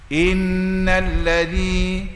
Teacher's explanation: itu makhraj dia depan gusi gigi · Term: Zal